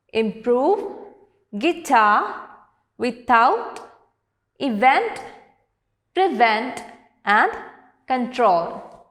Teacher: the words with stress on the second syllable are improve, guitar, without, event, prevent and control.